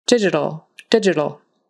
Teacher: that t is really soft, more like a d